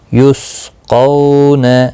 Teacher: دیکھیں سین کو یا اور واو کو قاف کے ساتھ ملا کر پڑھا جائے گا. قو واولین ہے، تھوڑا نرمی کے ساتھ کھینچ کر ادا کریں گے، اور قاف مستعلیہ بھی ہے، پر بھی پڑھنا ہے.